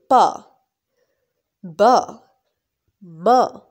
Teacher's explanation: It means that these sounds are produced when we join two lips together. When our two lips are joined together and produce a sound, this is known as bilabial sound. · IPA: /p/, /b/, /m/